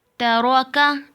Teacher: ता बारीक है और रा को पुर पढ़ेंगे, और काफ भी आगे बारीक है। तरोका, ता बारीक, काफ बारीक, दरमियान में रा को पुर पढ़ेंगी।